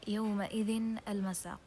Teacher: Okay, so we pronounce the tanween as noon. So if we have tanween, as you can see, يومئذ tanween kasr, it's pronounced as a noon.